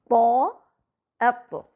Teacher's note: طا میں پلٹنے کی آواز یعنی قلقلہ بھی ہے۔